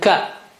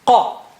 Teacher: Qa, qa. Kaf is a little bit, from the front, and qaf is inside, more inside.